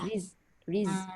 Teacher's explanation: Zai ni sifat dia tertahan udara, terlepas suara tapi tak ada qalqalah.